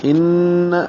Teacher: یہ غنہ ہے، آواز ناک کے بانسے میں جائے گی